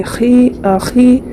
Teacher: خا میں یا مدہ ہے، یا ساکن سے پہلے خا کے نیچے زیر ہے، ایک الف کی مقدار کھینچ کر معروف پڑھیں گے